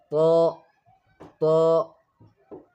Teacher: طا is pronounced by touching the tip of the tongue to the upper gums with a heavy sound, same like dal and ta.